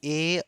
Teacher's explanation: ए और ऐ का जो उच्चारण स्थान है वह कंठ भी होगा और क्या होगा, तो तालु भी होगा